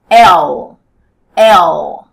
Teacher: enrolei a pontinha da língua e coloquei atrás dos dentes da frente